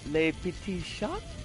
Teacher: there's not a strong T sound on the end of shot